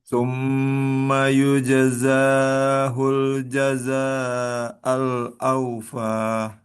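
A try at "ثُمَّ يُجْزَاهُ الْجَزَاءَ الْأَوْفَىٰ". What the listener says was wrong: Nah, jadi bedanya dua. Yang ini za dua, za empat atau lima. Yujazahul jaza'al awfa. kepanjangan.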